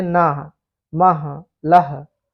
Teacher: ना, ला तथा मा ये अल्प प्राण है, परंतु इनके महाप्राण भी हिंदी में प्रचलित हो गए हैं।